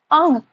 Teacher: थोड़ा सा नाक से आवाज निकल रही है, नासिका से। सो अंग। द्वे स्थानीय वर्णानम उच्चारण स्थानानी, मतलब दो स्थान से एक साथ एक वर्ण जो होते हैं वो दो स्थानों से उच्चारित होगा, ठीक है। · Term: नासिक्य वर्ण